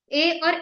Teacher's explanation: ये ए जो बनता है ये अ प्लस इ से बनता है